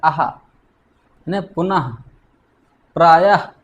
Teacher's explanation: जिस ध्वनि का उच्चारण हम हा जैसी हल्की श्वास के साथ करते हैं उसे विसर्ग कहते हैं